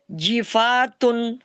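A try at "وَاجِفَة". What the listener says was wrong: کھینچے بغیر. وقف کیا ہے؟ وقف کی ہے یہاں پر. واجفہ.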